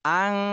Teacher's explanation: হামজা নুন জবর আং, নুন সাকিনের পরে ইকফার হরফ তা এসেছে, এজন্য এই নুন সাকিনে ইকফা গুন্না করতে হবে, আর ইকফা গুন্নাটা অনস্বরের মতন করতে হয়।